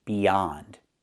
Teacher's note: Use the open ah sound like hot and stop. Not the o sound, but the ah sound.